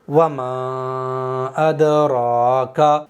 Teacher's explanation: दाल अदा होता है जबान की नोक ऊपर के दांतों की जड़ पर टच होने से, तो जबान की नोक को ऊपर के दांतों की जड़ पर हम टच तो करेंगे, लेकिन टच करते ही फौरन अलग हटा लेंगे।